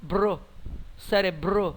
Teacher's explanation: Você não fala cérebro, nem cérero, é cérebro. As duas consoantes são pronunciadas e estão na mesma sílaba. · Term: encontro consonantal perfeito